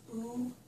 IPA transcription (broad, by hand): u